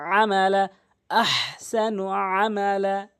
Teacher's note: আইনের উচ্চারণ করতে হবে হলকের মাঝখান থেকে